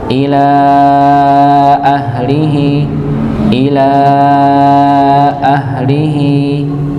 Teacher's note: lamnya dipanjangkan 4 harakat